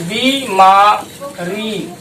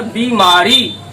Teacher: बी पे भी time दे रहे हैं और री पे भी टाइम दे रहे हैं